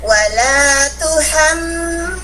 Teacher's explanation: Di huruf waw hanya satu harokat, wala dalam keadaan dicucuk bibir kita.